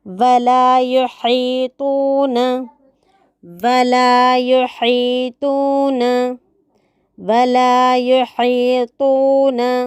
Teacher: ولا یحیطون میں یا کے پیش کو مجہول ہونے سے بچانا، ہا کی جگہ ہا پڑھنے سے، تو کی جگہ تا پڑھنے سے بچا کے رکھنا ہے۔